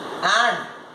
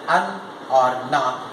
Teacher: and is the strong form, where an or na is the weak form